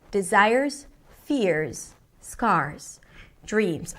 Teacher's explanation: when she hits each one of those stressed words, it hits a different note.